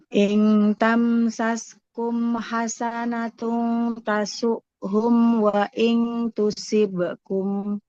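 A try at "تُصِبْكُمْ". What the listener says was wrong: Shotnya tebal kan Ibu? Wa in tusibakum. Jadi jangan si. Nanti jadi seperti sin dia. Tusibakum. Tusibakum.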